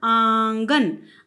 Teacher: बोलते हुए मैंने नाक और मुख से उच्चारण किया, जबकि मैंने गन बोलते हुए सिर्फ मुंह से उच्चारण किया है, नाक की मैंने सहायता नहीं ली है